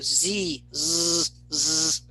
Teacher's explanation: put your hand on your larynx do you feel the vibration when you say z